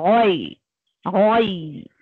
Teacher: गैन हुरूफ मुस्तालिया है, भारी करके पढ़ना है आपको गोई गोई। देखिए लीन को मैं भारी नहीं कर रही हूँ, गैन को भारी करना है।